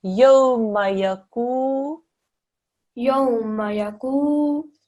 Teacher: Gaf, followed by with a dhamma, followed by a waw sakin. Because this is a waw sakin and there's a dhamma before it, this is now a waw madda. So we read this for 2 seconds.